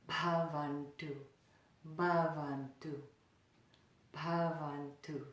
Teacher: There's a little little aspirated sound, a little breath with that ba sound.